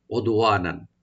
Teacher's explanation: দাল এখানে দাল সাকিন আমরা একটু কলকলা করব